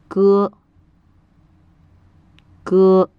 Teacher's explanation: both are unvoiced in Mandarin meaning that the vocal cords do not vibrate when you say them this results in a somewhat softer sound than the English letter